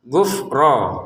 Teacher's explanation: Ghufro fnya jangan dipantulinnya karena bukan baju di toko. Jadi jangan dibaca gufro gitu ya.